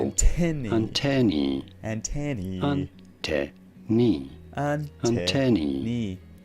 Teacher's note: You do want to stress on the second syllable, the te syllable.